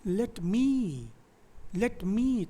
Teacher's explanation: तो लेट क्या हो रहा है, स्ट्रेस नहीं हो रहा है, बट मी इज स्ट्रेस्ड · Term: आयम्बिक